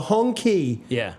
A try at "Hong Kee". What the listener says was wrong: They always write it K-E-E, but it's actually pronounced gay. Hongay.